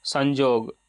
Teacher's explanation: य की जगह ज का उच्चारण होता है